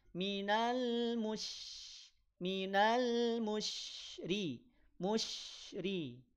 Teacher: Dari mana Tengah lidah mengarah ke langit-langit bukan dari bibir Makanya kalau sebelumnya ada huruf yang berharakat damah kemudian setelahnya ada syin maka yang monyong huruf yang dah saja syinnya jangan dimonyongkan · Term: shin